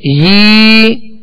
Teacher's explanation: یا ساکن سے پہلے والے حرف کے نیچے زیر ہو تو یا مدہ ہوگی، تو اس کو بھی دو حرکت یعنی ایک الف کی مقدار میں کھینچ کر ادا کریں گے